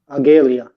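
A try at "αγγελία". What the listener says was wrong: No, because on lesson one, we talked about this line up here over the eye.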